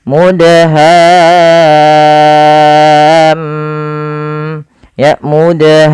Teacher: mimnya ada bacaan gunnahnya. Maka suara mimnya kita tahan ya teman-teman.